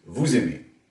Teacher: Dans ce dernier cas, vous aimez, il y a un enchaînement, c'est-à-dire que le z final forme une syllabe avec la voyelle qui suit.